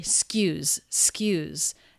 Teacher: Notice the word is not excuse, but it's skews. She turns it into one syllable.